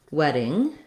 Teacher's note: So for example, in a word like wedding, those D's are a flap.